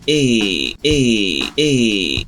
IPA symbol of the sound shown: e